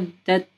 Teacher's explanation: یہ جو آواز آتی ہے نا اس کو ہمز کہتے ہیں. ٹھیک ہے، اگر آپ مدت بولیں گے تو دیکھیں ہمارے چیسٹ سے جو باہر کی طرف ہوا آتی ہے تو اس کا راستہ بند ہو جاتا ہے جب آپ تا کے مخرج پہ زبان کو لگاتے ہیں. مدت، ٹھیک ہے، اوپر گوش پہ لگ جاتی ہے.